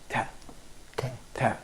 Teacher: alveolar here means that the tip of the tongue always actually touches the alveolar ridge, the upper teeth, probably the backyard of the upper teeth.